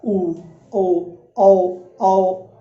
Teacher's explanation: इन्हें बोलने के लिए हमारे होठ गोल हो रहे हैं तो ये वर्तमुखी है